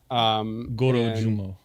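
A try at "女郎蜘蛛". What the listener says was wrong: No, it's Jorogumo. It's with a J. It starts with a J.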